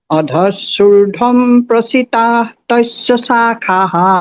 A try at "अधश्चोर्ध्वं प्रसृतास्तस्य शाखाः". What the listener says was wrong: नहीं, प्रसृतास, वो प्रसृताः नहीं होगा, प्रसृतास्तस।